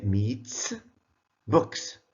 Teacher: We pronounce this S as S after voiceless sounds.